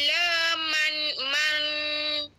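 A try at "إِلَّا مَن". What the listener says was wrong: A ni man bukan mang. Nah man dia bukan ifadak berat. Yang ni ringan dia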